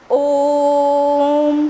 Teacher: जब हम ओम का उच्चारण करते हैं तो ओ को थोड़ा लंबा खींचते है ना, तो वो जो स्वर होता है वो हमारा है प्लुत स्वर।